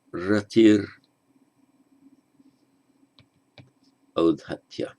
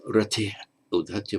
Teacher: That is because the visarga preceded by an I, same would happen if it were an U, becomes an R before a vowel.